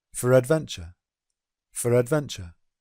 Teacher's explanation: For would reduce to f, again the schwa sound f, f. And then the intrusive r would come in between f and adventure to make for adventure